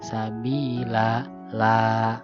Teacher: Jadi tidak dibaca lan karena waqaf, jadi dibacanya la, maka disebut mad iwad.